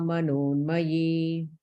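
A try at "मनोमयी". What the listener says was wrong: Where did that extra N come from? Manomai.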